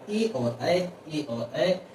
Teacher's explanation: ए और ऐ अ और इ से मिलके बने हैं तो अ और इ यानी कि कंठ और तालू उच्चारण स्थान हो जाएगा